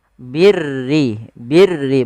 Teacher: huruf ro yang dibaca dengan tipis Yaitu ro tarqik yang di mana huruf rnya berharakat dengan berharakat